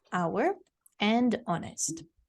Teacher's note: If you've been pronouncing this as hour and honest, we don't pronounce it that way. We're going to keep the H silent.